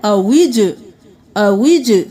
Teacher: جیم قلقلہ آواز پلٹ کے واپس آئے گی۔